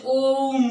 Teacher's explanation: ओम को बोलने में 3 गुना समय लगता है। स्वर के अपेक्षा इसको बोलने में 3 गुना समय लगता है। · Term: प्लुत स्वर